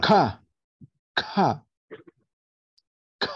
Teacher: Para producir este sonido, el dorso de la lengua se dirige hacia el velar, dice, cerrando el pase del aire que sale de los pulmones. Esta acción permite que ocurra una pequeña explosión.